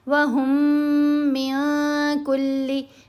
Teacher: یہاں میم ساکن نہیں پڑھی جائے گی، بلکہ یہاں ہا کو میم مشدد کے ساتھ ملانا ہے اور غنہ بھی کرنا ہے۔ · وَهُم مِّن كُلِّ، من کلی نہیں پڑھنا، نون ساکن ہے اس کے بعد کاف، تو یہاں ہم نے اخفا کرنا ہے۔ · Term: میم کے ادغام